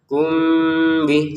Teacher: mim sukun bertemu ba dibaca dengan samar ya.